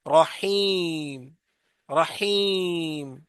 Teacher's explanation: تو یہ جب رحیم کہتے ہیں تو منہ کے خالی حصے سے یا کی آواز نکلے گی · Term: یا مدہ